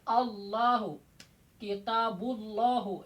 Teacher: Kalau sebelum lafaz jalalah itu patah atau dom, maka lamnya bisa tabkhim, apa? Tebal ke arah o. Allahu, kitabullahu ya.